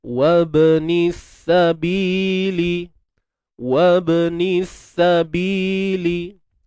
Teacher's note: Ba yang sukun ni kita matikan dengan qalqalah.